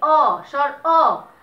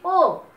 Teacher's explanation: ও উচ্চারণ করতে গিয়ে আমাদের মুখটা মানে ঠোঁটটা গোলাকার হয়ে যাচ্ছে বিধায় এটাকে আমরা সংবৃত উচ্চারণ বলি।